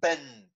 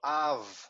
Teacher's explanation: short the letter ends in its pronunciation ben it immediately stops the soft b the v sound is long